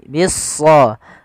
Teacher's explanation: alif lam syamsiyah, yaitu alif lam yang tertulis tapi tidak dibaca. Pada dasarnya kata bis-sabri itu dirujuk kepada al ditambah dengan asarnya adalah sabrun.